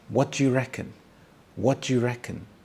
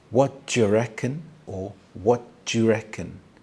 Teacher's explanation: do you is combined together to make the sound ju or ja